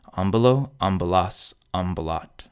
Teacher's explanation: The accent falls on the first syllable.